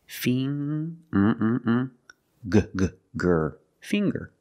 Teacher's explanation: We see the nasal ng sound, ng, plus the hard G, the g. Fing, g, g, gr, finger.